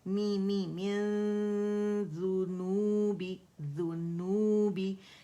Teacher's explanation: غنہ ریٹین کرتے ہوئے نون کو چھپاتے ہوئے جاؤں گی اور ذال کے مخرج کے قریب اسے ٹچ کیے بغیر اخفا 2 کاؤنٹ کا جو کاملہ گریڈ کا اس سے میں پہلے ادا کروں گی, پھر فرملی جاؤں گی اس کے اوپر, ذال کے اوپر, اور اس کو دھما کے ساتھ ادا کروں گی.